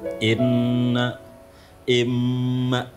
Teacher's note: setiap nun yang bertasdid, mim yang bertasdid itu idgham bi gunnah. Jadi mendengungnya agak lama ini.